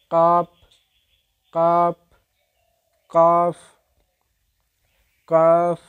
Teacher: জিহ্বার গোড়া তার উপরস্থ তালুর সঙ্গে লাগিয়ে উচ্চারিত হয়। জিহ্বার গোড়াটা তার উপর বরাবর তালুর সঙ্গে লাগিয়ে দিবেন